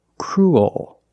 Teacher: Oh. And the bottom of the tongue expands. It gets bigger to make the dark L. · your tongue is not straight. It goes a little high in the back. Oh. And the bottom of the tongue expands.